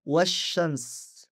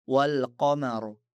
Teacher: Pada contoh pertama saya benar-benar menghilangkan al hamzah wasal ditambah lam. Sedangkan yang kedua, saya hanya mengabaikan hamzah wasal dan tetap mengucapkan lam karena yang pertama adalah alif lam syamsiyah dan yang kedua adalah alif lam qamariyah.